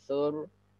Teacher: Roknya sukun sebelumnya dhammah berarti tebal ya.